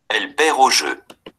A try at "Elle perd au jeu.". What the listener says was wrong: Oui, bien, excellent.